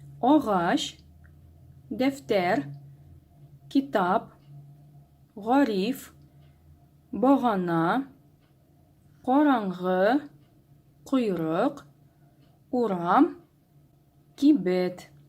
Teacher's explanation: Обращаем внимание, что в каждом слове последний слог произносится сильнее.